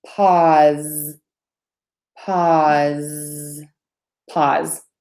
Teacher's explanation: okay okay so pause PA USA e3 sounds in the pronunciation short oh ah and then a Z